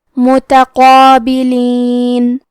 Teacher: مد الف میں پیچھے والے حرف کا حکم لیتے ہیں تفخیم میں اور ترقیق میں، تو کیونکہ اس کے پہلے حرف القاف کا حکم ہے تفخیم تو ہمیں مد الف کو بھی تفخیم سے مطلب بھاری آواز میں ادا کرنا ہے